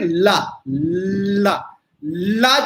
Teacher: ला में जीभ ऊपर जाके मिल जाएगी मूर्धा से, और इधर उधर थोड़ी जगह छूट जाएगी। तो जब थोड़ी भी जगह छूटी हुई है तो ये पूर्ण अवरोध नहीं हुआ। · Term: पार्श्विक